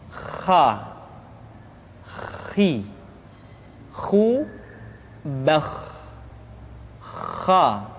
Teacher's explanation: pengucapan huruf kha persis terdengar seperti orang yang tidur dalam keadaan mengorok.